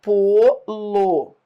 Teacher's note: Não, é átono. Ó, o pô é tônico, o lo é átono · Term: monossílabo tônico